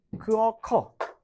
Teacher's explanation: 어감 받침이 으로 끝난 성분이 모음으로 시작되는 그 어미랑 만났을 때 으가 탈락하는 거죠. 자, 어간, 으가 모음, 어미를 만났을 때 어간의 으가 탈락하는 현상을 말해. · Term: 으탈락